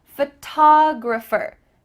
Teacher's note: make sure the emphasis is correct here photographer that t-o-g photographer is emphasized